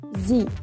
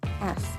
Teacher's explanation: Observe this yourself by placing the fingers upon your voice box and saying Z or Z and S repeatedly. You should feel vibration against your finger when saying Z, but no vibration when saying S.